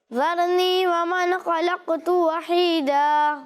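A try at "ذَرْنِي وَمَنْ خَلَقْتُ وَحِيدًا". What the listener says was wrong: اچھی کوشش کی، لیکن ومن، ٹھیک ہے، نون کی آواز جو ہے وہ لوٹتی ہوئی محسوس نہیں ہوگی. خلقتو یہاں کلکلہ کرنا ہے قاف میں. ومن، نون کی آواز جو ہے وہ لوٹتی ہوئی محسوس نہیں ہوگی، ٹھیک ہے؟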